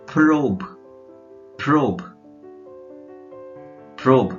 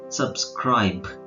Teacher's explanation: ಈಗ BE ಕೊನೆಯಲ್ಲಿ ಬಂತು ಅಂದ್ರೆ ಇದೊಂದು ವಿಚಿತ್ರ ಇದೆ ನೋಡಿ. BE ಕೊನೆಯಲ್ಲಿ ಬಂತು ಅಂದ್ರೆ ಅದನ್ನ ಬ ಅಲ್ಲೇ ನಿಲ್ಲಿಸ್ತಾರೆ